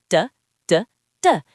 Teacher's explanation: To make this sound, your tongue taps the top of your mouth just behind your teeth. Du du du. It's a very quick and strong sound.